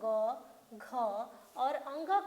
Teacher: जब हम ग घ और अंग का उच्चारण कर रहे हैं तो वहाँ पे कंपन हो रहा है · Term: सघोष